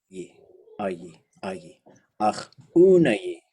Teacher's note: those end vowels must all be short and low.